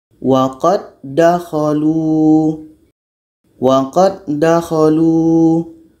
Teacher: Kalau da pertama ini masuk kepada da yang kedua. Jadi sifat da ini yang mati qalqalah tidak terdengar lagi. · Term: idgham kamil